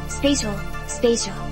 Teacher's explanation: The long A in spatial is a diphthong made by combining a short E, like the start of elephant, and a long E, like the start of eel. Like other diphthongs, these two sounds should meld together quickly and smoothly so that they appear as a single sound.